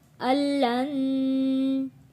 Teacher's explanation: نون ساکن کو ہم نے یہاں نہیں پڑھنا کیونکہ اگلے لفظ لام کے اوپر تشدید ہے، ہم نے حمزہ کو لام کے ساتھ جوڑنا ہے۔